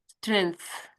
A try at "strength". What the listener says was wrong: That's better. That's the best one.